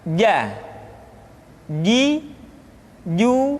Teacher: dikeluarkan dengan menyentuhkan tengah-tengah lidah dengan langit-langit